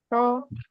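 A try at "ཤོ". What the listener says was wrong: Okay, you need to relax your tone. So, you don't need to curve your tone back.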